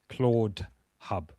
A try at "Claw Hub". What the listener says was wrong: Claude, like this. Because it's Claw. Claw, not ED. Claw Hub. ClawHub.ai.